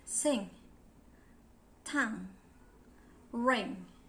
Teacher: Those are voice velar sounds.